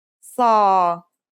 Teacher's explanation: The Sad is basically the strong version of the Sin we learned in the last lesson, and it kind of sounds like the S in the word saw. This sound is pronounced with your throat constricted.